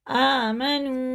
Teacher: आमनू, वाव को खींच के वाव साकिन से पहले पेश है तो उल्टे पेश की तरह इसे खींच के पढ़ेंगे, और खड़ा ज़बर भी खींचेंगे।